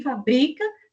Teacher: nós marcamos de uma forma a sílaba tônica, que é o bri